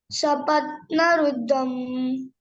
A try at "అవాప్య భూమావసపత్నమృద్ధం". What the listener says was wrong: మృద్ధం మా ఇక్కడ మా ఉంది కదా, రుద్ధం.